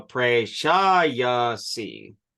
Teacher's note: you put the emphasis on the third syllable from the back